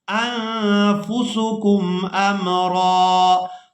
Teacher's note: را پر ایک زبر ادا کرنی ہے اور اس کو ایک الف مقدار کھینچ کر ادا کرنا ہے